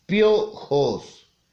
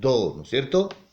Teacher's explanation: se encontraban en una misma sílaba dos vocales una vocal cerrada y otras vocal abierta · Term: diptongo